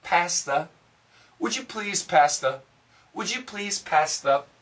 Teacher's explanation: the faster we say that, the TH is going to be gone